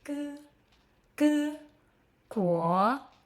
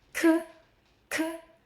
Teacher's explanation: The difference between g and k is simple. Air. G, no puff. K, strong puff.